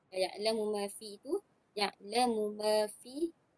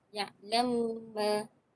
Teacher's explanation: akan mengidghamkan huruf yang pertama itu ke dalam huruf yang kedua